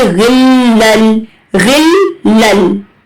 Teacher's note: جب تنوین کے بعد لام اور را آئے تو ہمیں غنہ نہیں کرنا، ہمیں غنہ کے بنا پڑھنا ہوتا ہے کیونکہ یہاں پر ادغام وداؤٹ غنہ ہو رہا ہے۔